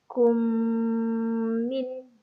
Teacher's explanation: mim mati bertemu dengan mim sabdu. Jadi perlu dibaca panjang.